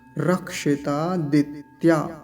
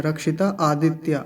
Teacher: आदित्य अलग नहीं करेंगे एक साथ बोला जाएगा सारा